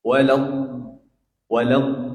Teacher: Huruf dot ini beda sendiri, dia punya sifat istitolah itu. Suaranya mengalir sedikit gitu.